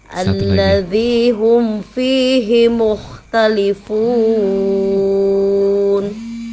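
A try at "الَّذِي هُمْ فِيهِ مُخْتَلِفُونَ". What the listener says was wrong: Fihinya kurang tajam, kurang tapi fihi harus hi ya. Fihi. harakat kasrahnya.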